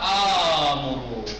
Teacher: 2 حمزہ ایک جگہ جمع ہو گئے، دوسرا ساکن پہلا متحرک، تو اسے الف سے بدلنا واجب ہے، ہو جائے گا آمرو۔